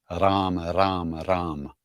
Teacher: Well, if you're Indian, you roll the R's.